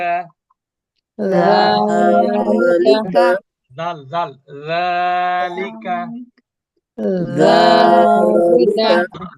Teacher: জিহ্বার আগা উপরে দাঁতের আগা